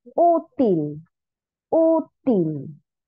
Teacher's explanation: útil tiene el acento en la penúltima